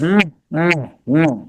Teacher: But you know the funny laugh from evil villains. Notice how your tongue curves and pushes up at the top of the back of your mouth. Some of the sound goes up your nose. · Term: ng sound